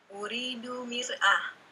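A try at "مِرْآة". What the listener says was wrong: A-nya panjang ya, terus bertanya.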